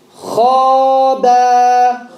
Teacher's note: The Kha is heavy, make it heavy. The Ba is light, make it light. Don't mix the two. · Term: heavy letter